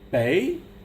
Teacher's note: The second tone, bei, it's like you're asking a question.